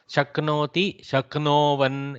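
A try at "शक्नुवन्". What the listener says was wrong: In this case, ukara has to come.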